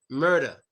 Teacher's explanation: We pronounce the ER as an A.